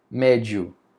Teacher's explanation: Veio a semivogal primeiro, depois que veio a vogal. Então o som está crescendo, o ditão está crescendo. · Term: ditongo crescente